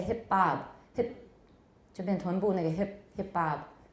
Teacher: the t will turn into a glottal stop plus probably the consonant will also assimilate so hit bob the t becomes a glottal stop that itself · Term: assimilation